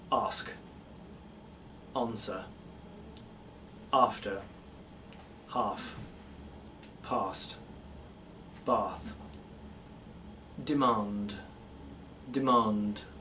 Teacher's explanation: these are all going to be switched to that nice Posh plumy British ah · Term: plummy British ah